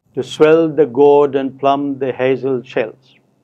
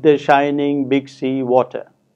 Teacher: the first line exemplifies iambic meter and the second line exemplifies trochaic meter